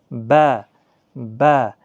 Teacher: جو ہونٹوں کا تری والا حصہ ہوتا ہے وہاں سے ملا کر با ادا ہوتا ہے